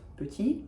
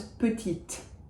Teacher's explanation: If I add an E to petit, it becomes the feminine version of petit, little, and it becomes petite. So that final E breathes life into the consonant before it. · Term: E muet